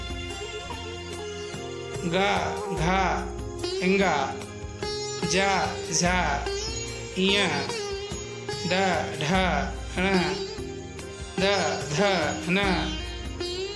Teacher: इनके उच्चारण से आपकी स्वर तंत्रिकाओं में झनकार उत्पन्न होगी। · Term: घोष व्यंजन